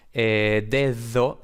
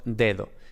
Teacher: La segunda D es mucho más suave que el equivalente inglés en the. · los alófonos de B, D, G no son fricativos, como por ejemplo pueden ser en inglés they, el pronombre they, sino que son aproximantes, ¿no? Es bastante más suavito, ¿no?